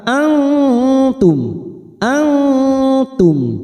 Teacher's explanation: nun sukun bertemu ta ikfa hakiki, kita samarkan bunyi nun sukun 3 harokat